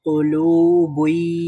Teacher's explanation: ই সাউন্ডের মধ্যে গুন্না হবে, মানে ই সাউন্ডের মধ্যে একটু দেরি করব